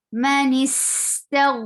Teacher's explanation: Ghain will get flow of sound. It will be heavy too. It is a heavy letter and it will get rukhawa.